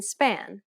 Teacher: It is not the same as the B sound, however, which is much harder. This P sound is said without aspiration, meaning you should not release a burst of air when pronouncing this sound.